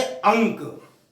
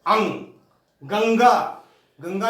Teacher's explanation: इनके उच्चारण में वायु नासिका से ही गूंजती है। जैसे अंक, तो आ में अंक की मात्रा आई है, अंग। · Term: अनुस्वार